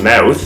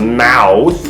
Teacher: canadians have a tendency to raise their tongues in their mouths when they make ow sounds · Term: canadian raising